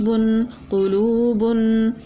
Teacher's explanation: دو پیش کی تنوین تھی غنہ کر کے پڑھا